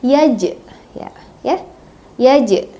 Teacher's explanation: Jadi bacanya memantul, yaj, ya, yaj. Jadi memantulnya sedikit aja, yaj, karena berada di tengah-tengah ayat.